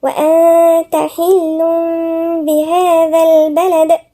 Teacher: والدال هنا في قلقلة لما بنقف عليها